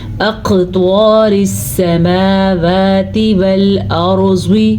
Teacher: قاف موٹا بھی پڑھا جاتا ہے، طوا بھی موٹا پڑھا جاتا ہے